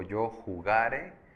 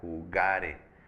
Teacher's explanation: La sílaba tónica es ga, jugare. Esto quiere decir que es una palabra grave, termina con ns o vocal, en este caso termina con vocal.